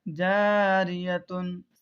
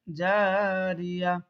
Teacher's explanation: گول تا پر آیت کرنا ہو، سانس توڑنا ہو تو ہائے ساکنہ بن جاتی ہے، جیسے جاریتن سے جاریہ۔